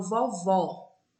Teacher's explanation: E quando eu falo vovó, a vogal O da última sílaba é aberta, porque mudou o acento. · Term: vogal aberta